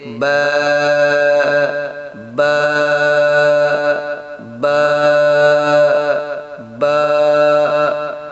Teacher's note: بند ہونٹوں کے گیلے حصے سے با ادا ہوتا ہے